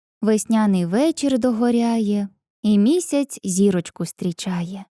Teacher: у кожному рядку поезії наголошений другий четвертий і восьмий склади